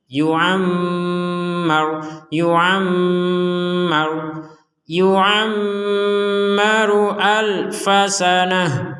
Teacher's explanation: ada mim bertasdid sama dengan di atasnya Nun bertasydid maka kita membacanya dengan dengung